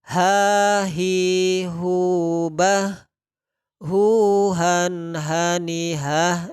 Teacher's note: tenggorokan bagian bawah makhroj huruf H